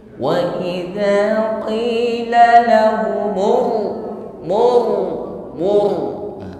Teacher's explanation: tidak sekedar tebal tapi juga takrir ada getaran ya irti tarisan getar ujung lidah waidzailur murah tebal [Musik] l